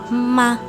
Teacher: میم ہونٹوں کے بیرونی یعنی کہ خشک حصوں کو ملانے سے ادا ہوتا ہے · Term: میم کا مخرج